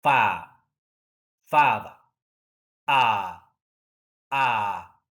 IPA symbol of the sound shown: ɑ: